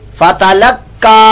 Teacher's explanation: فتلقا قاف پر مشدد قلقلہ بھی ہو رہا ہے اور وہاں پر آپ پر موٹا بھی اس کو پڑھیں گے